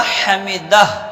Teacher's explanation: ہا کو کہاں سے نکالیں گے؟ درمیان حلق سے